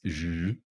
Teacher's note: It's voiced. We can feel the vibration. And this is where that SH sound is. It's a little bit behind the alveolar ridge. So this is considered a post-alveolar sound.